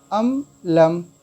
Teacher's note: हम मीम साकिन के बाद लाम आया तो इस मीम को बग़ैर गुन्ना के हम ज़ाहिर करके पढ़ेंगे